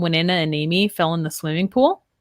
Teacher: so here we're doing a lot of consonant to vowel linking